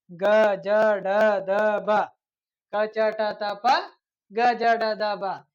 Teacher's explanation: ಅಲ್ಪ ಅಂದ್ರೆ ಇಲ್ಲಿ ಕಡಿಮೆ ಉಸಿರಿನಿಂದ ಉಚ್ಚರಿಸಲ್ಪಡುವಂತಹ ಅಕ್ಷರಗಳಿಗೆ ನಾವು ಏನೆಂದು ಕರಿತೇವೆ ಅಂದ್ರೆ ಇಲ್ಲಿ ಅಲ್ಪ ಪ್ರಾಣ ಎಂದು ಕರಿತೇವೆ. · ಕ ಚ ಟ ತ ಪ ಇವೆಲ್ಲ ಏನ್ ಮಾಡ್ತಾವ ಇಲ್ಲಿ ಕಡಿಮೆ ಉಸಿರು ತಗೊಳತಾವ.